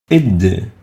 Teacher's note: It articulates at the top of the tip of the tongue with the upper incisor teeth, similar to the ut in that case.